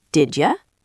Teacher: the d sound at the end of did mixes with the y sound at the beginning of you to create a j sound. So the question becomes, did ya?